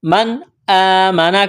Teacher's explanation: نون ساکن کے بعد حروف حلقے میں سے حمزہ ہے، یہاں پر اظہار کریں گے۔ · کڑا زبر ہے، الف کے برابر کھینچنا ہے